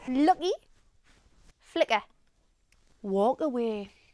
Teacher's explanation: We can also glottalize the K if it appears between two vowel sounds